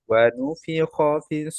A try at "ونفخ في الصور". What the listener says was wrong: খটা আরো হেভি করেন, খটা ক্লিয়ার হয় নাই। ওয়ানুফি খ, খ এর মাখরাজ কোথায় ভাই? তাহলে খ এর মধ্যে রখাওয়া আছে, আওয়াজটা চলবে, হ্যাঁ। ওয়ানুফি খ, এই যে খ, ওয়ানুফি খ,